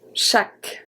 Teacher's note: So here CH make the sound sh, sh. So we don't have the ch, ch, like in English. We have a sh, sh.